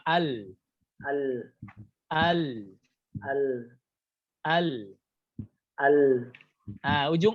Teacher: ujung lidah yang bertumpukan di langit-langit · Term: huruf lam